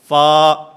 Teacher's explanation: اوپر والے 2 دانت جن کو ثنایا علیہ کہا جاتا ہے، ان ثنایا علیہ کے کنارے جس وقت نیچے والے ہونٹ کے اندرونی حصے سے ٹکراتے ہیں تو اس سے فا ادا ہوتا ہے، فا. مخرج نمبر 16، دونوں ہونٹ، اس سے 3 حروف ادا ہوتے ہیں.